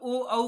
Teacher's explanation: ओ दौतोः कण्ठौष्ठम्, अर्थात कंठः अस्ति और पुनः ओष्ठम अस्ति। कंठ ओष्ठम, आप ओ औ का प्रयोग करिए, देखिए वो एक कंठ से भी उच्चारण निकलेगा और दूसरा ओष्ठ भी आपका स्पर्श करेंगे